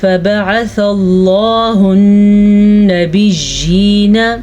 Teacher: پھر سے نون پہ شد آ رہی ہے ہمارے پاس، تو نون کے اوپر غنہ ضرور کرنا ہے آپ نے